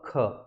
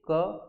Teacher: ख जब हम पढ़ते हैं ना तो ज्यादा हम प्राण को यूज करते हैं, वाय को यूज करते हैं, क को कम प्राण